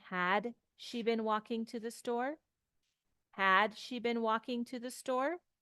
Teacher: the intonation goes up it's a yes no question